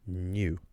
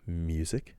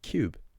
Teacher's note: You can tell that all of those letters have a little Y sound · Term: slender consonant